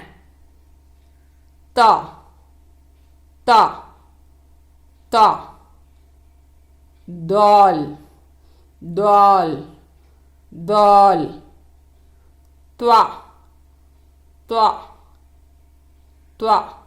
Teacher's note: இவை நுனிநாவு மற்றும் மேல்நடு பற்களில் இருந்து உச்சரிக்கப்படுகின்றன